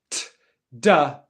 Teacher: you pause airflow and then you release airflow in an explosive manner